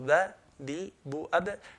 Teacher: the makhraj for ba, is when the two lips touch together